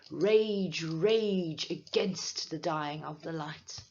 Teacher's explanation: in this case I have a long a that is being emphasized and it makes the lines sound forceful